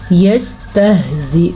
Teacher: یہ ہا سینے سے نکلتی ہے اور حمزہ کو لمبا نہیں کرنا. نہ تو زا کو لمبا کرنا ہے نہ حمزہ کو